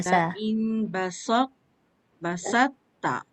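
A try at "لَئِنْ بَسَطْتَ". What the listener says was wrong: Sin dah betul tapi to tak angkat. Lepas sebut sin terus angkat lidah untuk menebalkan to. Tu yang dia berbunyi macam belok tu. Belok tu dia proses daripada lidah lidah dia kat bawah dia naik atas.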